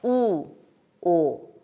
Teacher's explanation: 우가 미세하게 더 높은 위치에서 소리를 내게 됩니다. 그래서 우, 오. 그리고 혀가 안에서 더 속에서 소리가 납니다.